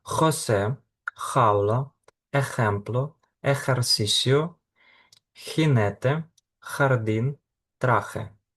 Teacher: Наступна літера - це літера Хота. Завжди читаємо як звук х, більш хреплячий та інтенсивний, ніж в українській мові.